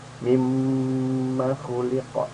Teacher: mimma khuliqa karena mimnya guna 2 harokat, kemudian tidak ada tanda seperti ini nih, seperti alif tegak.